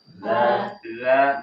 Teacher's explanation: jadi ketika kita melafazkan za, tidak boleh ada hembusan nafas yang terasa di tangan yang kita letakkan di atas, di depan mulut kita.